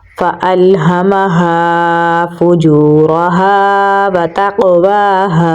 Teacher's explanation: فُجُورَهَا۔ تا کو قاف کے ساتھ ملائیں گے، قاف کو پر یعنی موٹا پڑھیں گے، حروف قلقلہ میں سے ہے تو یہاں پر ہم قلقلہ کریں گے ، واو پہ کھڑی زبر ہے تو لمبا پڑھیں گے، ہاں